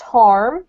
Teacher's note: if you pronounce it in the US accent it's pronounced harm with an R